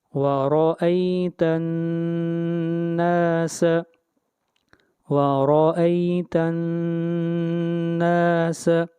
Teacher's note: تا، نون زبر تن، وَرَأَيْتَن. نون کے اوپر شد ہے، اس لیے آواز ناک میں جائے گی، غنہ ہوگا